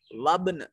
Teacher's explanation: कुतुबु जद्दिन हुरूफ कलकला में से बा मौजूद है जो साकिन है, और बहालत सुकून इस पर कलकला वाजिब होगा